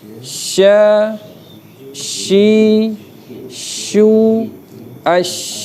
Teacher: Shin terbuka sedikit, ada laluan angin.